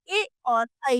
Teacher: कंठ और तालु से बोले जाने वाले ए और ऐ हैं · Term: कंठताल्य